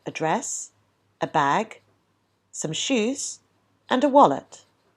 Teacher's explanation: the rising intonation when listing items indicates to the listener that the speaker is not yet finished · so you probably found that as you were listing the items your intonation pattern went rise rise rise and fell on the final item